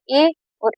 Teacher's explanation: ए और ए बोलेंगे ना तो तालु से भी टच होगी जीभ और हमारा कंठ जो है वो भी ध्वनि निकालेगा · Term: कंठ और तालु